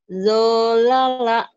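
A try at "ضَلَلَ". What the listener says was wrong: jangan do ya bulat kalau itu.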